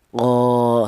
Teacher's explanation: alif ini didahului huruf yang berharakat fathah ini dipanjangkan dua harakat qo seperti itu. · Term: mad thobii